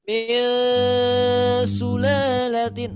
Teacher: Itu masuk ke hidung. Tapi ketika kita menutup hidung kita, min sulalatin, masih ada suara. Berarti gunahnya tidak begitu sempurna. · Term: ikhfa hakiki